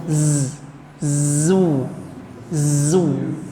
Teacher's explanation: Zu itu getarnya ada dulu